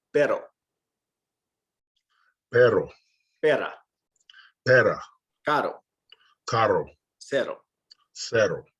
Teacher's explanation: if it's a singular R that comes in the middle or at the end of a word, it's not rolled